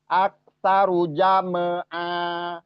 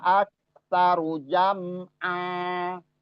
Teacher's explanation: Jadi wa aksaru jam'a itu ain ke fathatain dan kita wakof di situ, mat iwat dibaca seolah-olah kayak mat tobi'i dan panjangnya 2 harokat ketika berhenti